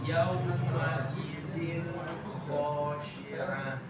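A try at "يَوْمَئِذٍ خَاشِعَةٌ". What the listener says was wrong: Ya, coba lembutkan lagi khonya. Khoshi'ah.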